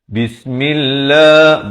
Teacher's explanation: ba bari kasrah bertemu sin tu jelaskan. Jangan bunyi samar. Bismillah, tak betul, mestilah bismillah.